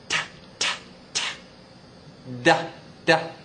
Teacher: it's the top of your tongue touching right behind the front of your your teeth